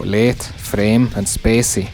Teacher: The A in late, frame, or spacey gets reduced to E